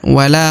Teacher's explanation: di depan huruf la terdapat Alif maka huruf la harus dipanjangkan dua harakat